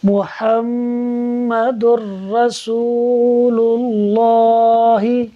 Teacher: دال پر 2 پیش کی تنوین ہے، 2 پیش کی تنوین کے بعد را حروف یرملون میں سے ہے، لہٰذا یہاں ادغام ہوگا بغیر غننے کے، یعنی ہم دال کو را سے ملائیں گے اور بغیر غننے کے ادغام کرتے ہوئے پڑھیں گے۔